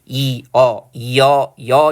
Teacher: 반모음 이에다 어 결합한 거죠